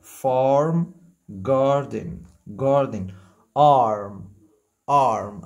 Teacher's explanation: يبقى حرف الاي بينطق اه مفخم لو جه بعد منه الار